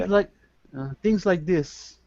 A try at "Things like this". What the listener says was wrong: a little slower. You, as I've told you before, and I think a lot of people will recognize, you're an advanced speaker, but be careful with your speed. When you go faster, you tend to soften your consonants more than you should.